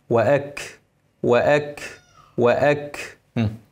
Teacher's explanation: الكاف لما يكون عليها سكون لازم ابين الهمس